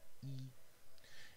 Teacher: It is front because the tongue is towards the front of your mouth. E. And it is unrounded because your lips are spread.